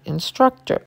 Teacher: the last T is said softly